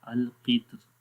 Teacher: کتر کے اندر انہوں نے را کو باریک پڑھا، کیونکہ جب را کو وصل کے ساتھ پڑھتے ہیں، ملا کر پڑھتے ہیں، تو را کے نیچے زیر ہے، اور زیر کا مطلب ہوتا ہے کہ را کو باریک پڑھا جائے، تو اس وجہ سے انہوں نے بھی کتر کو کیا کیا، باریک پڑھا، القطر، ٹھیک ہے۔